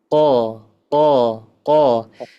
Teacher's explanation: bacanya dari lidah paling belakang ke langit-langit yang lunak